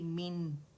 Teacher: کسرہ کے لیے ایک آواز 1 کاؤنٹ کے لیے نیچے جائے گی اور نیچے سے نون ساکن سے ملے گی مین. لیکن نون کو, مخرج کو ٹچ کرنا ضروری ہے. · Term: کسرتین